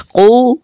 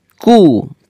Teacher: কফ পেশ কু, মোটা করে উচ্চারণ করতে হবে। কাফ পেশ কু, পাতলা করে উচ্চারণ করতে হবে।